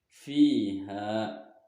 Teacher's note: huruf fa berharokat kasroh bertemu ya mati, maka cara membacanya dipanjangkan 2 harokat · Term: mad tabi'i